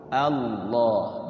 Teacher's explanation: Kalau sebelum lafaz Allahnya itu fathah dan dhamma, maka dia tebal. Minallah berarti lafaz Allahnya dibaca tafkhim tebal.